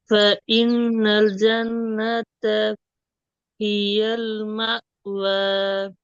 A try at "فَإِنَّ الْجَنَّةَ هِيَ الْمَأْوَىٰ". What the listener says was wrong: ஜன்னத்துன்ட்டு நிப்பாட்ட கூடாது, நிப்பாட்டுறது பிற. அப்படி ஒவ்வொரு சொல் சொல்லா ஓதி பழக வேணாம். அப்படி ஒவ்வொரு சொல் சொல்லாக ஓதி பழக வேணும், அது பெரிய பிழை.